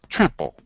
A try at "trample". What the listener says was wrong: Say, all three of you are using kind of a more open A. You can use it, okay? But remember, if you're doing an American accent, particularly a neutral East Coast accent like mine, it's a little bit more closed. So you have to start with am.